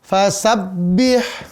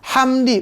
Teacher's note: ujung lidah, gusi gigi seri atas, ya. Sifatnya tipis, napas ditahan dan memantul.